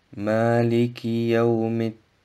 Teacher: Das Mim im Wort Yawmi wird mit dem Dal des nächsten Wortes Ad-Din verschmolzen.